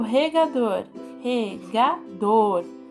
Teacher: o dor é a sílaba tônica como ela tá localizado na última sílaba ela é oxítona